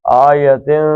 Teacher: اخفا کریں گے، ناک سے نکالیں گے۔